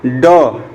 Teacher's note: जो मूर्धन्य व्यंजन होते हैं इनको बोलते समय आपकी जो जिह्वा होती है वो पीछे की तरफ मुड़ती है